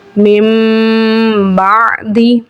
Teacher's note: नून साकिन और तनवीन को मीम से बदलकर इफा करें यानी गुना करके पढ़े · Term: इकलाब